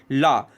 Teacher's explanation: ला का उच्चारण करते समय हमारी सांस जीव के बगल पार्श्व से गुजरती है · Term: पार्श्विक व्यंजन